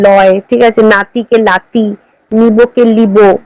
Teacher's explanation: প্রায়শই র ধ্বনি ল ধ্বনিতে এবং ন ধ্বনি ল ধ্বনিতে পরিণত